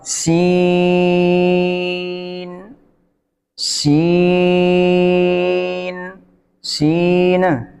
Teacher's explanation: इसी तरह आगे सीन में सीटी का होना ज़रूरी है, सीन में सीटी भी होगी और सीन को 3 सेकंड खींचेंगे क्योंकि मद है